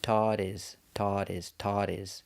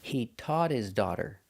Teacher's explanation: his is also not an important word, so it's not stressed in the sentence. So, the H in his is silent. So, again, that means phonetically it's a vowel. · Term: fast D